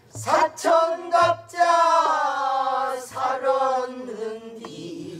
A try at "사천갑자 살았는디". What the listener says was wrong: 누가 음이 떨어진다. 사천갑자 동방사군 사천갑자 살았는디 어룽자도 그대로 해 시작. 그렇죠 그렇게 하면 돼 어룽지는 것이 아니여 그렇게 그대로 가는 것이야 사천갑자 갑자 동방사군 사천갑자 살았는디 이렇게 가면 돼.